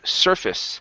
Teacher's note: we don't pronounce a long a there it's actually a short I